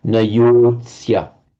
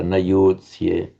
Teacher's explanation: You've got to be very careful in Sanskrit to give it a full long vowel length, even if followed by a consonant cluster as here. Nayotsya, there's a temptation to shorten it because of the following cluster of Nayotsya, but Nayotsya.